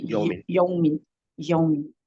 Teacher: یومن آپ نے کیلا واو کو لمبا تھوڑا سا کر دیا، میرے خیال میں واو ساکن سے پہلے زبر ہے تو یہ واو لین ہے تو اس کو لمبا نہیں کریں گے